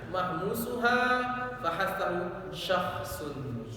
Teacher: Jadi huruf kha itu hamas, banyak keluar, banyak udara yang keluar.